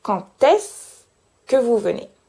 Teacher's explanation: comme d'habitude, je ne prononce pas le E du se. Donc ça donne quand est-ce que vous venez.